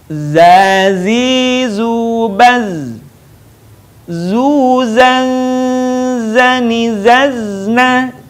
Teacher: huruf Za dikeluarkan dengan ujung lisan kita hampir di atas dua gigi seri bagian bawah diucapkan dengan mengalir suara tanpa diiringi dengan mengalirnya udara · huruf za ini, karakter khasnya dia mirip dengan suara dengungan tawon.